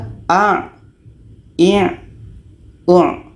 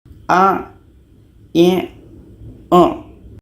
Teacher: Jadi letaknya a ini di tengah-tengah tenggorokan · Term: huruf ain